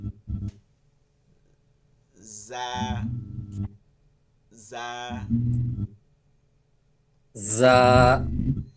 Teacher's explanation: হ্যাঁ, হ্যাঁ, জা জা, জা, জা জা, জা তাহলে এটাকে আমরা বেশি বেশি কোথা দিয়ে হবে? জিহ্বার আগা, নিচে দুই দাঁতের আগার সঙ্গে লাগায়া জির শব্দ আসবে। · লাইনে লাইনে স্পার্ক করলে যেমন একটা শব্দ আসে, জিরজির করে শব্দ আসে, ঠিক ওইভাবে আওয়াজটা হবে।